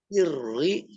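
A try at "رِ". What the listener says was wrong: Iri tipis. Iri sambil meringis. Nah, jangan ditebalkan. Bukan bukan tebal. Masih tebal. bergetar.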